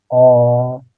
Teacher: तो हम लोग जब अ का उच्चारण कर रहे हैं तो हवा सीधे कंठ से बाहर आ रही है। कंठ से उच्चारण करके देखिए अ, यानी कि उच्चारण स्थान क्या हो जाएगा इसका, कंठ हो जाएगा।